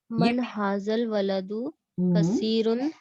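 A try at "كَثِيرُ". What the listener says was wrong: कसीरुन कैसे हो गया सिस्टर? इस पर आपने एक पेश लगाई है और इस पे आप दो पेश लगा रही हैं, इसका क्या कसूर है? इसको नकरा क्यों बना रही है? इसको भी मार्फा बनाए ना, अलिफ लाम लगा हुआ है। कसीरो।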